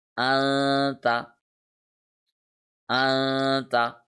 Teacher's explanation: we have to read the sound of noon in our nose. Secondly, we have to stretch it for 1 second. And thirdly, we must not touch our tongue anywhere. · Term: ikhfa rule